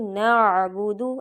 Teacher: عین نکالنا ہے، حمزہ نہیں پڑھنا ، نعبدو نہیں، نعبدو، ایسے عین نکالنا ہے واضح، وَإِيَّاكَ، وَإِيَّاكَ